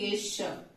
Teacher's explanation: इसको तालव्य श कहते हैं क्योंकि इसके बोलने में जीभ हमारी तालुक पे ही छूनी चाहिए